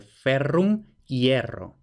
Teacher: Vemos que lo que teníamos era una E abierta tónica. Esta E abierta tónica, según sabemos, diptonga. Igual que, por ejemplo, de ferrum, hierro.